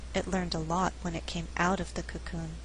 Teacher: I emphasized out because we're contrasting going into and coming out of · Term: sentence stress